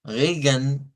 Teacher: cuando las palabras terminan en E, con N o E con M, se omite el sonido de la vocal.